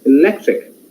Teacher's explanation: lec is the tonic in the sense of stressed syllable